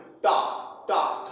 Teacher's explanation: मूर्धन्य से टा वर्ग बोला जाता है